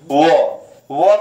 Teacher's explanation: दांत और ओठ की सहायता से बोले जाएंगे दंतोष्ठ